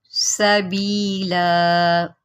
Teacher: ربہ سبیلا، سین کی سیٹی نکالیں